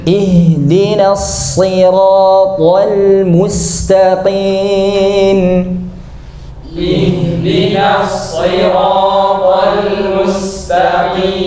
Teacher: ihdina, nunnya tipis, shotnya tebal, nasira tanpa bibir muncul ke depan